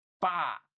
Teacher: ada beberapa daerah yang kalau dia mengucapkan huruf fa itu begini pa gitu ya. Jadi bibir dengan bibir gitu ya